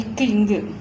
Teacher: நாவின் முதல் அன்னத்தின் அடி